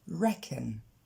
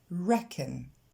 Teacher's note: L'accent tonique tombe sur la première syllabe, le re. Et ensuite, c'est le petit son E qu'on a déjà vu dans la vidéo sur les voyelles courtes, et donc on l'entend à peine.